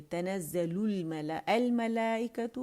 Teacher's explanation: مد متصل واجب بن رہی ہے، اسے 4 to 5 کاؤنٹس کھینچے جائے گا